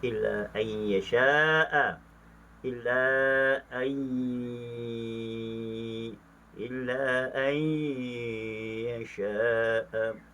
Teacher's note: dibaca secara idgham ma'al ghunna, nun mati bertemu dengan ya